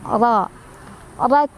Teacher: Ro-nya dibaca secara tafkhim karena ro-nya barisnya fathah. Jadi ditebalkan ya.